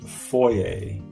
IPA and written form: ˈfɔɪ eɪ (foyer)